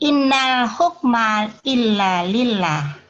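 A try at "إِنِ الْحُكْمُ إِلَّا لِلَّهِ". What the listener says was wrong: Salah. Bukan inna tapi in. Bunyinya sukun. Nah, kalau perkata bunyinya in, kalau dibaca wasal inil ya. Ini kalau berkata nunnya sukun in. Jadi di sini dari bunyi aslinya memang inna, tapi dalam praktek lafadznya dibaca wasol. Ya, dibaca wasol.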